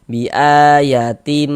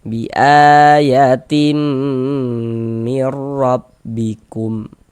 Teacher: Sehingga ini kita baca bi ayatim, jangan dibaca bi ayatin, tin, jangan, tapi tim. Kemudian di bagian timnya itu suaranya itu kita tahan, kita panjangkan sebentar ya, kira-kira sepanjang 2 harokat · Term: idgham bi gunnah